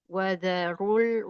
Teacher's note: rnya dibaca tafhim karena berharakat domah